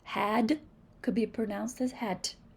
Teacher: in African American English, the D sound is sometimes pronounced as the voiceless T.